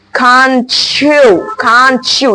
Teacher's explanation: just try to combine it by the sound CH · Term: CH sound